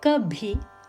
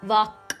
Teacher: The same form K can be pronounced fully as in kabhi or as a stop sound K, as in vak.